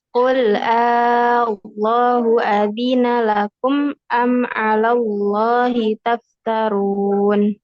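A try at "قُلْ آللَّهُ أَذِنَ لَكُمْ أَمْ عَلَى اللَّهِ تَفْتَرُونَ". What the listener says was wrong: Masih belum 6 harokat? Qul Allahu.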